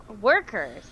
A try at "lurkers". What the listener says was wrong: Lurkers. Sorry, not workers.